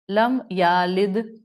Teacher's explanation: اس کو یم یلد کو پڑھ لیا، لم یالد. آپ نے یا لد کر دیا تو آپ نے اس یا کی حرکت کو بڑھا دیا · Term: لہن جلی